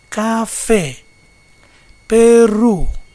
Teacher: palavra aguda ou oxítona, palavra cuja última sílaba é tônica, exemplo, café, Peru.